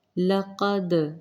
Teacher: دال پر جزم، یہ قلقلہ ہوگا